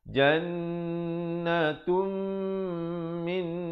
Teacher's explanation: Jan dua harakat, wajibul gunnah. Natum juga di situ idgham bi gunnah, tanwin bertemu mim. Asalnya jannatun, tapi bila datang mim jadi jannatum. Beza tun dengan tum.